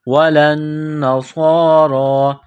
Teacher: لام کو نون کے ساتھ پلس کرنا ہے، نون مشدد ہے غنہ کریں گے